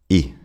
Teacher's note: And this brings us to the short e. It's the same mouth shape as the long e, just a bit shorter.